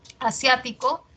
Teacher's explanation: Asiático es esdrújula, sia tiene la mayor fuerza de voz